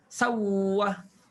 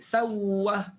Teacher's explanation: Jadi contohnya sau'ah, tukarkan hamzah jadi waw dan masuk waw pertama dalam waw kedua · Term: idgham